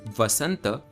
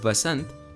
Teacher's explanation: notice how sanskrit adds an a sound to the end of each letter while hindi does not almost like there is a halanth on the end of each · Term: schwa